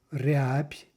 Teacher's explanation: we know that's actually a soft P we're getting there because of the devoicing